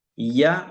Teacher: ഇയ എന്ന് പറയുമ്പോൾ നാവിന്റെ മധ്യാണല്ലോ ഉപയോഗിക്കുന്നത്, നാവിന്റെ മധ്യഭാഗം.